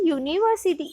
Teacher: the letter U has the consonant sound of Y and not the vowel sound of U. यानी यूनिवर्सिटी, in the word यूनिवर्सिटी word के साथ मैंने जो समझाया ना, यूनिवर्सिटी word के साथ क्या है?